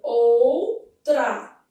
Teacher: Então aqui, ó, ou, vogal e semivogal, ditongo. No caso, como a semivogal está no final, é um ditongo de que tipo? Decrescente.